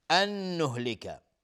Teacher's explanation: نون ساکن بعد نون ادغام با غنه